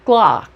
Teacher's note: para eu falar clock, eu já sei, eu abro a boca para A, mas falo O.